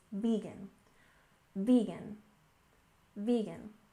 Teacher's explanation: And next we have vegan, with stress on the first syllable. It's not vegan, it's vegan.